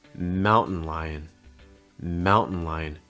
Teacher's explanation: Notice that held T on mountain. So instead of saying mountain, it's more mountain.